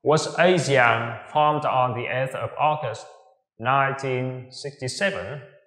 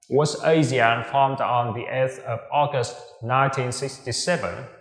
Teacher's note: Ngữ điệu đi lên ở cuối câu. Đó, với câu hỏi đúng hay sai, chúng ta sẽ sử dụng ngữ điệu đi lên ở cuối câu